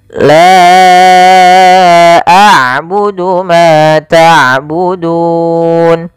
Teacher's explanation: Maka panjangnya la kita panjangkan sepanjang empat harakat dan kita hukumi bacaannya dengan bacaan mad jaiz munfasil.